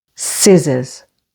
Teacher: the stress here is on the first syllable scissors